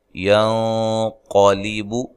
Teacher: نون ساکن کا اخفا ہے، موٹا اخفا ہے ، قاف کو موٹا ادا کرنا ہے، علا لا مد اصلی